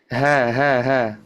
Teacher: Diarahkan suaranya tidak ke langit-langit, tapi langsung keluar dari tenggorokan, langsung keluar. Tidak diangkat dulu ke langit-langit. · Membaca ha tetap dari tenggorokan bagian bawah, tidak dari dada.